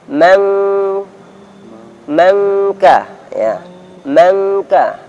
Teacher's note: Kiru man katibin, kiru untuk ikhfa'nya ketika bertemu kaf, maka langsung makhraj, langsung masuk ke makhrajnya kaf, dalam artian bunyi suaranya NG, meng mengka ya, mengka.